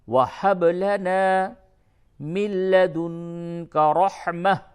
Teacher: وہب با میں قلقلہ ہوگا